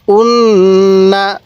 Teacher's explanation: এখানে নুনের উপর তাজদিদ এজন্য আমি গুন্নাহ করছি